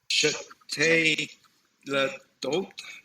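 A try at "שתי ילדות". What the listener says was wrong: That shva needs to disappear. Shtei Yeladot. Shtei Yeladot. These numbers, they're consonant clusters. You won't hear anyone say shetei. It's shtei. Shtei Yeladot.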